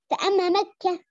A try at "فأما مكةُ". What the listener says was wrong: ما أنا ما ضميت التاء، ما ضميت التاء في كلمة مكة.